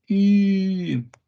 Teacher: it's e but more rounded lips